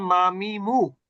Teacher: দুই ঠোঁটের বহির্ভাগ থেকে যুক্ত করে অক্ষর উচ্চারণ হয়, অর্থাৎ দুই ঠোঁট থেকে উচ্চারিত হয়